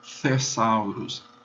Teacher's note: pronunciá-lo como aquele T aspirado do inglês · O grupo TH vai soar o T e a aspiração.